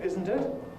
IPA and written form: ˈɪzn̩t ɪt (Isn't it?)